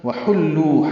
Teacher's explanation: وحلوا حا وسط حلق سے ادا کریں گے، لام باریک پڑھیں گے